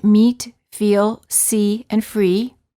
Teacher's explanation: the tongue is tense it is high and far forward near the roof of the mouth